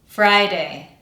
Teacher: Fry. And we make it sound stronger than day by making it a little bit longer than day.